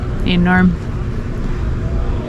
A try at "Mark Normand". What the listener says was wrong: Mark Normand. Yeah, Mark or Norman, not Norm.